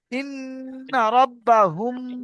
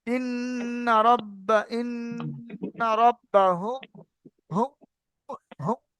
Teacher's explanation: দেখেন নাকটা কাঁপবে এমন তবে হবে গুণনা, যদি আমি নাকটা বন্ধ করে দিয়ে দেখবেন গুণনা হবে না।